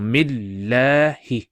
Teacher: that la stretching sound is due to the hovering alif